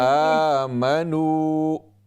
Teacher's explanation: یہ واو مدہ ہے، اس کو کم از کم ایک الف کی مقدار اس کو آپ لمبا کریں